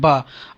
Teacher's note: बा बोलने से देखिए दोनों ओठे मिलते हैं